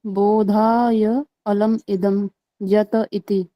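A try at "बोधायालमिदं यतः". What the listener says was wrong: बोधाय, अंतिम पाद क्या है पूरा? बोधाय आलम, पूरा विग्रह किए अन्वय नहीं, सीधे सीधे पूरा चलो। हाँ, बोधायालम इदम यत, अन्वय व्यतिरेका,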